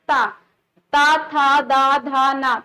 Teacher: हमारी जीभ जो है वह हमारे दांतों से टकरा रही है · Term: ता वर्ग